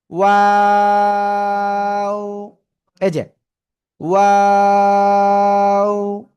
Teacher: এই যে জি জি আমার দিক তাকান, এই যে দুই ঠোঁট, প্লিজ আমার দিক না তাকালে হবে না কিন্তু, এই দুই ঠোঁট গোল হবে, ঠিক আছে, শুরুতে গোল, মাঝখানে আবার দুই দিকে প্রসারিত হবে এবং শেষে এসে আবার গোল হবে, 3 আলিফ টান হবে এই অক্ষরে